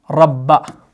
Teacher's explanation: बा मुशद्द है। तो इसको हम जो है दो बार पढ़ते हैं। इसका जो मखरज है यानी इसकी जो अदायगी है वो दोहरी है।